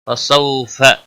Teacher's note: सौ वाउ लीन है, थोड़ा नरमी के साथ खींच कर अदा करेंगे